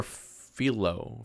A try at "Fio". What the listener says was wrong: I'm pretty sure it's Fio. Like the L is silent,